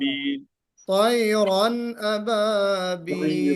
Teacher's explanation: طيرا میں غنہ نہیں ہوگا، یعنی یہاں پہ طيرا اخفا نہیں بلکہ اظہار ہوگا